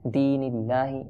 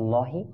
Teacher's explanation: আল্লাহ শব্দের লামটি বারিক হবে